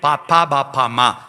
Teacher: ചുണ്ട് കൂട്ടി തുറന്നിട്ട് വ്യഞ്ജിപ്പിക്കുന്ന ഓഷ്ടം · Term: ഓഷ്ട്യം